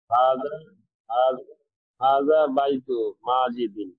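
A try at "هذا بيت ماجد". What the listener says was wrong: স্পষ্ট, আরো স্পষ্ট করে বলেন, জবরজয়গুলো আরো স্পষ্ট করে বলেন।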